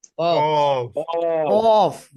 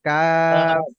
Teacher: কফ, কফ, ভারী আওয়াজ, আর এটা একদম হালকা আওয়াজ, কাফ।